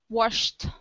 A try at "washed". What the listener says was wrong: Washed. It's the vowel. Washed.